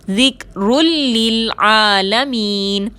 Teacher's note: الا میں الف مدہ ہے، 2 حرکت کے برابر کھینچ کر پڑھیں گے۔ ذکرن میں را کے اوپر 2 پیش کی تنوین ہے اور اس کے بعد لام آ رہا ہے، مشدد کر کے بغیر غنہ کے ادا کریں گے